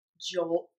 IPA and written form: ʤoʊlt (JOLT)